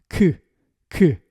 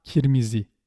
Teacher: you need to pronounce the k in the back of your mouth